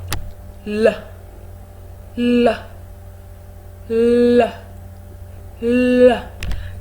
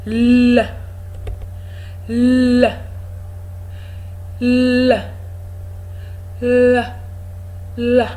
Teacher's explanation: You rest your tongue on the alveolar ridge, the tip of your tongue, and then you release it, allow it fall.